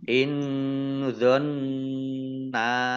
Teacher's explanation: In dzonna nun sukun bertemu dengan huruf dha, bacaan ikhfa dibaca samar-samar. Nun tasdid dibaca gunnah atau mendengung, ditahan 2 harokat.